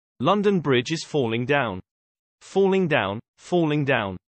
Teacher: is composed of quatrains in trochaic tetrameter catalyptic which means that each line is composed of four metrical feet of two syllables with the stress on the first syllable in a pair